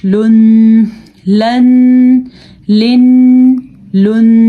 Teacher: लाम हर सूरत में बारीक पढ़ी जाती है लाम को पुर पढ़ना जायज नहीं है हां अल्लाह का नाम